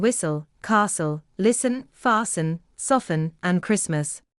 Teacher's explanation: The letter t is silent in whistle, castle, listen, fasten, soften, and Christmas.